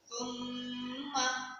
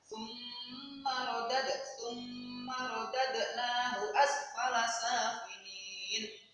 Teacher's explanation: Nah, ini bacaan gunnah, yaitu apabila ada nun atau mim yang bertasdid. Cara membacanya yaitu ditekan dan mendengung.